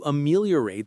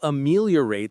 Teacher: The stress is on the second syllable, meal.